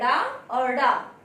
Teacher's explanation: इनके उच्चारण में जीभ ऊपर उठकर झटके के साथ नीचे गिरती है, अर्थात इन 2 वर्णों का उच्चारण करते में हमारी जीह्वा तालु का स्पर्श करते हुए तुरंत नीचे गिरती है, इसलिए इसे हम क्या कहते हैं? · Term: उच्छिष्ट व्यंजन